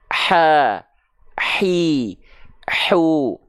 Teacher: melafalkan H kecil itu dirasakan dari bagian tengah tenggorokan kita rasakan keluar dari sana alirkan dulu nafas berbisiknya baru masuk